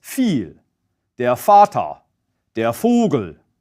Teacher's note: German V is almost always pronounced as a voiceless F. That means you don't vibrate the vocal cords.